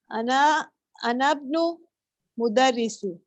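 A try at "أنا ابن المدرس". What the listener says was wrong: Mudarrisi. Ahsanti.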